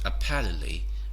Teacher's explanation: we just pronounce apparently without the T sound. The T is silenced here, or they say loss.